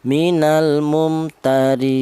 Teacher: Atau boleh wajah yang kedua boleh dibaca tawas itu artinya sedang yaitu dua alif atau empat harakat